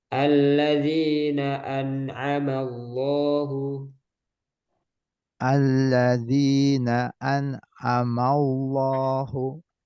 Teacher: jadi nun sukun atau tanwinnya jangan sampai kelamaan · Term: izhar